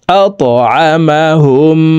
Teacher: আইন জবর আ, মিম জবর মা, হা মিম পেশ হুম। এই হা তাসদিদওয়ালা মিমের সাথে গুন্নার সহিত পড়তে হবে, মাঝখানে জজমলা মিম বাদ পড়ে যাবে